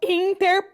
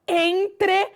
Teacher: A consoante R permaneceu, mas houve uma troca de lugar com a vogal.